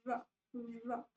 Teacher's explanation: जब आप र बोलते हो तो आपकी टंग थोड़ी सी कर्ल होती है र ठीक है अंदर की तरफ थोड़ी सी कर्ल होती है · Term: रोटिक लिक्विड